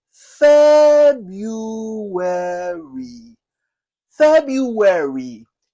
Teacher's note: Okay, it's a 4-syllable word with the stress on the first syllable, and you say fair. It has a hidden Y and a hidden W.